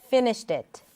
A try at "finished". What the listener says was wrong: don't be so afraid of moving it away from the neutral e sound